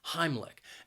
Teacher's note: Heimlich has two syllables and the stress is on that first syllable